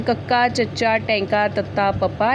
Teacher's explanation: ਅਨਾਦੀ ਅਤੇ ਅਲਪ੍ਰਾਂਤ ਧੁਨੀਆਂ ਹਨ ਕੱਕਾ, ਚੱਚਾ, ਟੈਂਕਾ, ਤੱਤਾ, ਪੱਪਾ